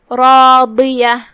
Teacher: کلمت راضیہ یہاں حرف الرا ہے اور اس پہ زبر ہے. را کا حکم ہے تفخیم، ہم را کو بھاری آواز میں پڑھیں گے، جو کہ اس کے بعد مد الف ہے.